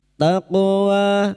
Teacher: huruf qof yang mati asli di tengah kalimat qalqalah sugro jangan lupa dipantulkan